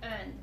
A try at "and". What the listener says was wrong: Good. Open more for that one.